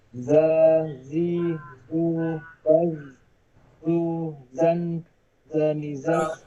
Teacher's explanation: ujung lisan di antara gigi atas dan gigi bawah. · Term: huruf zai